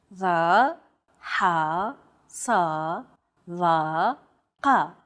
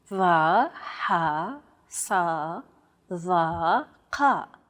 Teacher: They sound like the D, H, S, T, and Q sounds respectively, except much more tense because the throat is constricted. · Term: emphatic consonants